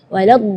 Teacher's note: huruf dhad itu keluarnya dari pinggir lidah maupun yang kanan ataupun yang kiri atau dua-duanya